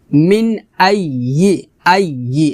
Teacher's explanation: হবে আই ই হামজা ইয়া জবর আই ইয়া জে ই ই জিহ্বার মধ্যখান উপরে তালুর সঙ্গে লাগিয়ে ইয়া উচ্চারণ করতে হবে